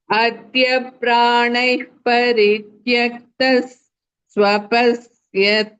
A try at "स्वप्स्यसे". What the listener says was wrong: Swapa. No, don't say swapa. Pa is half. Swap. Say only swap and don't say swapa.